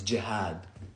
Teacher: the kasra, aka the I sound after jim is added, and then the extended alif, the long a sound, is added after ha, so it becomes jihad.